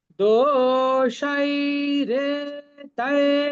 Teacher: এই হাফ খ ছাড়া এই শব্দের সবগুলোই দীর্ঘ। দো, তারপরে সাই, রে, তাই, সবগুলি হচ্ছে দীর্ঘ। দোষাই রে তাই, সবগুলো আমরা এক সমান করে উচ্চারণ করব। · দোষৈরেতৈঃ, দেখুন এখানে সবগুলো অক্ষয় দীর্ঘ, শুধু বিসর্গের পরিবর্তে আমরা খর মতো উচ্চারণ করব। এই হাফ খ ছাড়া এই শব্দের সবগুলোই দীর্ঘ। দো, তারপরে সাই, রে, তাই, সবগুলি হচ্ছে দীর্ঘ।